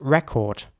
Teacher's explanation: the lips are getting quite round for record in the British English version whereas in the American English version it's more like record so